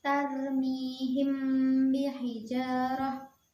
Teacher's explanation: mim sukun bertemu dengan ba, maka cara membacanya yaitu dengan samar-samar di bibir dan mendengung.